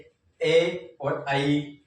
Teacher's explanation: कंठ तालव्य। कंठ तालव्य मतलब कंठ से और तालु से जिसका उच्चारण किया जाए